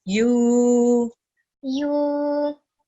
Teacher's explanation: because it has waw madda, we're going to prolong the sound for 2 seconds